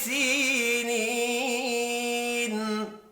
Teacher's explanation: سینی، دو یا مدہ ہے، دونوں کو ایک ایک الف کی مقدار میں کھینچ کر پڑھنا ہے۔